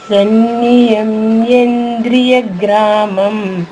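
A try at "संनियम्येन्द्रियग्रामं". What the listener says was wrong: యాకి దీర్ఘం కూడా ఉందమ్మా. సన్నియమ్యేంద్రియ గ్రామం. 3 అక్షరాలు ఉన్నప్పుడు, 3 హల్లులు ఉన్నప్పుడు ఒక అక్షరంలో నా దా రి 3 అక్షరాలు ఉన్నాయి కదమ్మా. మొదటి అక్షరాన్ని పుల్లుగా చెప్పేసి మిగతా 2 అక్షరాలు వేరుగా చెప్తే మనకు ఉచ్చారణ సులభం అవుతుంది. సన్నియమ్యేంద్రియ నా పుల్లుగా అంతే. సన్నియం ద్రియ గ్రామం అంతే.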